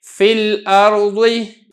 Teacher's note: آپ حرف فا کو براہ راست آپ نے لام کے ساتھ ملا دینا ہے